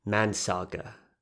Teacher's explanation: in Luta, Chamorros would say mansaga, not assimilating the word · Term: Dialects